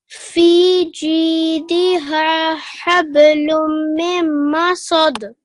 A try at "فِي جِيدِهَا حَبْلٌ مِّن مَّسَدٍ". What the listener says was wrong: So في جيدها حبل من مسد. So make sure you give a nasal sound for a bit longer, okay?